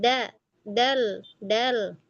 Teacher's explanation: Jangan tebal dong. Huruf dal nggak tebal. Tipis. Istifal.